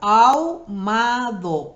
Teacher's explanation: ahí la H no suena. La A y la U van en una misma sílaba.